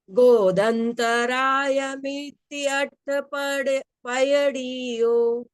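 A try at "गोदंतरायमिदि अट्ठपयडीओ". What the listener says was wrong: गोतम, गोद और अंतराय, इनकी संधि हुई है, गोदंतराय। तो म नहीं आएगा, गोदंतराय ऐसा प्रोनाउंसिएशन आएगा उसका।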